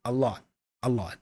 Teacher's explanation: the T for lot is not pronounced fully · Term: the stop T